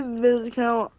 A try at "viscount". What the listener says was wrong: Viscount, by the way. The S is silent. It's a French word. even in French, it's spelled differently. In French, it's a vicomte.